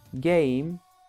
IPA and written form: geɪm (game)